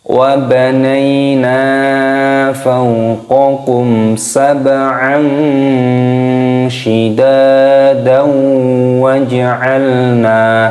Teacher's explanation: Namun kalau digandengkan ketika wasol, ketika sambung, wa banayna fawqakum sab'an shidadan waj'alna, dimasukkan ke dalam huruf wawu dan disertai berdengung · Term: idgham bi gunnah